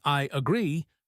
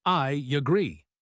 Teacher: It is not a strong stressed Y. It is just a gentle glide.